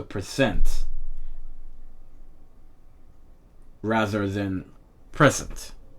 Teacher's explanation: You have the noun present and the verb present. So here you have on pre, you have the tone for the noun, and the verb, you have the tone on sent. So present rather than present.